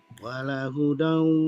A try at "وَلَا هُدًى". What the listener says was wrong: Wala, lanya panjang. Wala dibaca panjang.